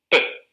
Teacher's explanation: P es sorda, es decir, se crean sin que las cuerdas vocales vibren y por tanto sin voz